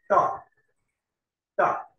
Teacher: Next, the tip of the tongue is touching, here it was the lower lip. Here the tip of the tongue is touching the upper incisor.